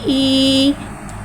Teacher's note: या साकिन है, या साकिन से पहले ज़ेर आ रहा है, या मद्दा हो रहा है, या तो या मद्दा को एक अलिफ यानी 2 हरकत के बराबर खींच के पढ़ेंगे